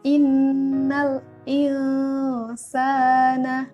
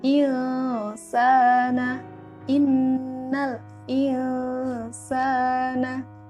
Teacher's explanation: antara nun mati, atau tanwin, dengan huruf setelahnya itu dibaca samar-samar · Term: ikhfa